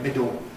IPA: ˈmɪdo